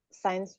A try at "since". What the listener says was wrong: Since. Bukan science. Since, ya.